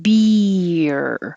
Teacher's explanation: your tongue is doing movement inside. It's going very high for the E and then sliding down to make the R. So it's almost two syllables if you slow down.